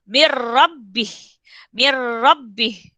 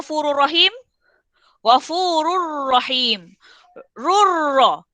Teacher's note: Menggabungkan bunyi nun dengan huruf selepasnya. Tapi tanpa dengung. Tanpa dengung.